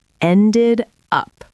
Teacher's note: Listen to the connection. Ended up. It sounds like one word.